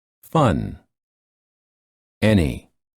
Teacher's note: sound the tip of the tongue touches the gum rdge and the sides of the tongue touch the upper teeth and the air flows out of the nose